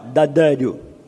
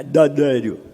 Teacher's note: É ar ingressivo. O ar está entrando ao invés de sair.